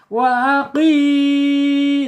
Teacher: saya pencet-pencet hidungnya barusan tidak sengau karena al-jaub yang mengalirnya lewat mulut saja, nggak boleh lewat hidung. Kemudian secara sifat ya di sini ada asyidah ya, tertahan ketika dia sukun.